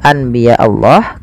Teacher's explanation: membalikkan suara Nun menjadi suara mim awalnya Anbiya Allah karena bertemu dengan ba maka diganti dengan mim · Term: iqlab